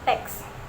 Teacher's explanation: Yang pertama itu bunyi K diucapkan dengan menghentakkan bagian belakang lidah ke langit-langit lembut atau velum. Lalu yang kedua, bunyi S dihasilkan dengan membiarkan udara mengalir melalui celah kecil antara lidah dan langit-langit keras.